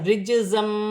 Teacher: جیم ساکن ہے، حروف قلقلہ میں سے ہے، قلقلے کے ساتھ ادا کیا جائے گا، رجزم، دو زبر کی تنوین کے بعد میم مشدد آ رہی ہے، تنوین میں غنہ بھی کیا جائے گا، ملا کر بھی پڑھا جائے گا